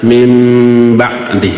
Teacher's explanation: nun mati menghadapi huruf ba, disebutnya apa? Iqlab. Si nunnya berubah menjadi apa? Mim.